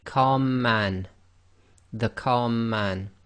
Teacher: the two M's sort of merge together and you end up holding the two M's for a little bit longer and effectively not taking a pause between the two letters. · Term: gemination